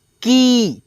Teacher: क में बड़ी ई की मात्रा है पढ़ेंगे थोड़ा सा अपने आवाज़ को खींच करके